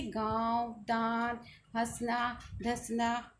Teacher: उच्चारण करते समय हवा नाक और मुख से समान बाहर निकलती है अर्थात दोनों पर समान दबाव होता है। · अनुनासिक इसका उच्चारण नाक और मुंह से होता है।